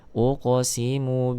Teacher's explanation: di sini ada qof sukun maka Munculkan sifat qalqalahnya